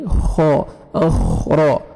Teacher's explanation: را کو فتح ہے، را کو موٹا کر کے پڑھیں گے